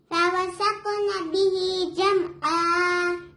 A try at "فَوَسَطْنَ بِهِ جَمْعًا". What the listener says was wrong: ان نون پہ غنہ ہوگا. نون ساکن کے بعد سین آیا تو سین کیا حروف ہے؟ اخفا. ہم ان کو نون کو ظاہر نہیں کریں گے. ہم ایسے نہیں بولیں گے انسان. ہم نون کو چھپائیں گے یہاں.